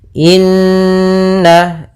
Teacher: ada bacaan gunah yaitu kita panjangkan dua harakat surah nnya karena di sini gunah ya ada Nun bertasdid ditandai